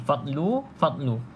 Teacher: jangan lantunkan sebab huruf dad ni bukan huruf Qalqalah kan kita Dah sebut tadi huruf Qalqalah ada lima saja kan